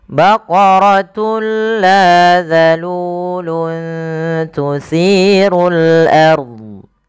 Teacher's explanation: yang dimaksudkan di sini adalah memasukkan suara tanwin pada lafal baqaratun ke huruf la kemudian padafal lanya sendiri ini ada bacaan Madi lanya dipanjangkan dua